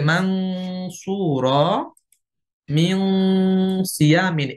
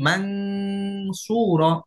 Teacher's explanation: পরবর্তী হরফটা মোটা, এই জন্য গুন্নাটা পরবর্তী হরফের মাখরাজে গিয়ে গোপন হয়ে যাবে। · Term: ইকফা গুন্না